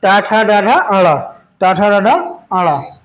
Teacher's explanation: इनके उच्चारण स्थान में हमारी जीभा मूर्धा या मूर्धन को स्पर्श करती है